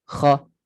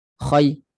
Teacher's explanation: Jadi kena sempurna fathahnya. Kha dengan kadar satu harakat, bukan setengah. Kha, khay, itu setengah harakat. Khay laju sangat dia masuk ya.